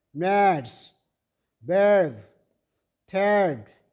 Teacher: Your tongue is open mid and at the central position of your mouth. Lips shape is rounded. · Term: long vowel sound number 5